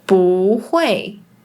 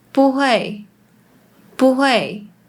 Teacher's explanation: When it's combined with another fourth tone, it becomes the second tone, which is the rising tone, like 不会, 不会. But Malaysian speakers often still pronounce it with the fourth tone, so it becomes 不会, 不会.